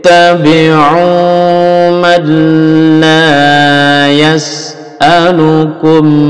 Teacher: nun hilang masuk ke lam tanpa dengung